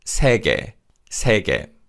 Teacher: In this word, although we use the Y-glide vowel ye in the second syllable, the vowel weakens, and this is pronounced 세계, 세계.